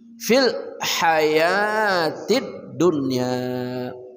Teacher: ha tengah kerongkongan